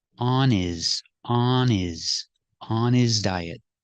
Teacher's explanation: the H is silent because his is not a stressed word